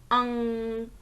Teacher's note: इस मात्रा का चिन्ह जो होता है वो एक डॉट लगाया जाता है, एक बिंदु लगाया जाता है और इसे उच्चारित करते समय हमारे नाक से ध्वनि निकलती है। अंग, आप देखेंगे नाक से हवा निकल रही है, ध्वनि निकल रही है। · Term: अनुस्वार